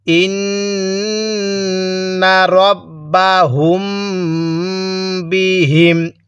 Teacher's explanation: এই মিম সাকিনের পরে বা থাকলে সেখানে আমাদের গুন্নাহ করে পড়তে হয়